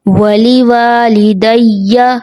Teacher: یا ساکن اس سے پہلے زیر یا مدہ ایک الف کے برابر کھینچیں گے. غلطی جو ہوتی ہے اس کو کھینچا نہیں جاتا، جلدی سے پڑھ دیا جاتا ہے.